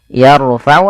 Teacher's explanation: Tebalkan huruf rnya karena huruf ro sukun di dalil fathah itu adalah kondisi dia salah satu 14 huruf eh maaf 14 kondisi ro dibaca dengan tebal yaitu yarufau apabila ada huruf ro sukun didahului dengan fathah atau dommah. · tebalkan huruf ro-nya karena huruf ro sukun didahului fathah